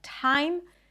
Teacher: it could be an aspirated T, like at the beginning of words